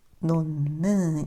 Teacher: 니은의 영향으로 디귿이 비음, 니은이 되어요